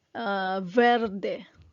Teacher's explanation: they replace the B with a V as in vine sound